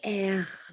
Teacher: the R sound is a rolling, like a r, but not with the tongue. It's more at the back of the throat.